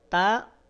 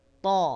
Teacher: kalau huruf Ta dia punya sifat istifal sehingga bunyinya tipis kalau huruf tho dia punya sifat apa istilla juga punya sifat itbaq sehingga tebalnya sempurna baik dalam kondisi fathah dah atau F kasrah sekalipun ta th